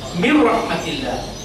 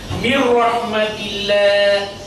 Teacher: লক্ষ্য করুন এখানে আমি উদাহরণ দিয়েছি মির রাহমাতিল্লাহ, নুনের উপরে সাকিন আছে, তারপরে অক্ষর এ র এসছে, এই জন্য এখানে নুনের একটা গুণা আবহ নাকের মধ্যে হবে না, এটা সরাসরি এই মিম রর সাথে উচ্চারিত হবে, নুন টোটালি উচ্চারিত হবে না। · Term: ইজহার